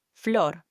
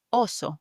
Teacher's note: the O is pronounced again like a pure just O sound. Okay, similar to the sound of the English word hop.